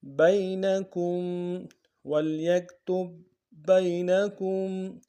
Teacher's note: کاف کو میم ساکن کے سامنے لانا ہے. میم ساکن غنہ کریں گے